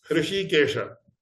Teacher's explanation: So, Hrishikesha, it involves a Murdhanya Shakara and Talavya Shakara.